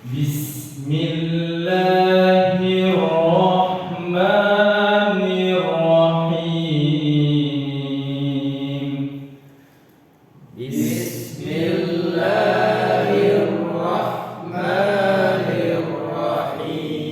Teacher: Kalau yang kedua ini sin, tipis, bis, seperti kita ngomong es, bis, bukan bish, bukan juga terlalu tipis, bis biasa, sinnya biasa.